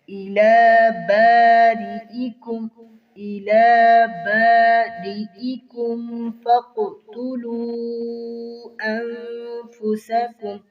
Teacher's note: قاف پر کلکلا ہو رہا ہے دوسرے درجے کا